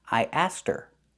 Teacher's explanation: the H is silent in her because it's not an important word.